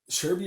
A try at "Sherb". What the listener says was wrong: Sherb. You say Sherby because you're Brazilian.